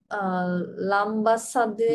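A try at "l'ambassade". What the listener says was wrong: লাম্বা না, আইএম, হবে, সাউন্ড কেমন হবে? অম, স্বরেও ম, হ্যাঁ। অথবা কখনো কখনো আমও হতে পারে, হ্যাঁ, এখানে হবে, তাহলে লম্বাসাদ, কি হবে?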